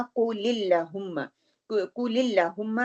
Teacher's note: क्योंकि लाम से पहले जेर आ रही है इसलिए उसको हम लाइट पढ़ेंगे